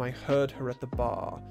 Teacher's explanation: it sounds like the vowels in heard and bar are much longer than they probably should be. And it's just because you're taking out the R and replacing it with extra vowel, essentially.